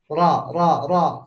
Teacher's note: ada yang disebut takrir atau suaranya jadi bergetar ro ro ro ya efek dari anginnya mau keluar tapi dibendung